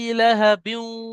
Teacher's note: তাব্বাত ইয়াদা আবি লাহাবিউ, এই গুন্নাটা হচ্ছে না, লাহাবিউ এটা ইদগামে নাকিস বলা হয়। তানমিনের কিছু অংশ ওয়াওয়ের মধ্যে চলে যাবে।